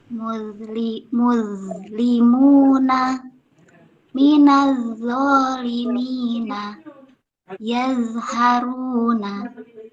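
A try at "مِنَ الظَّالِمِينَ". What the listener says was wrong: Ya, ditebalkan lagi bun minallah-nya. Minallah, bantu dengan tidak senyum. Minal-zalimina. Tadi udah bagus ya, udah.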